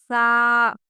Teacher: تا باریک آواز کے ساتھ، تو پر آواز کے ساتھ، سا باریک آواز کے ساتھ اور زبان دونوں دانتوں کے درمیان میں